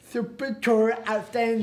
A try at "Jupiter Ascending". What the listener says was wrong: You see, that's what you're saying, the J like an S. No, it's a J. Yeah, but all right, Jupiter. Jupiter.